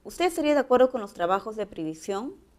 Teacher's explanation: aquí el tono final es ascendente